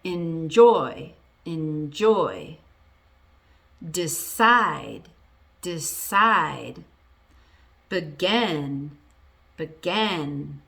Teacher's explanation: For verbs that are 2 syllables, now this one's a little different. The stress is on the second syllable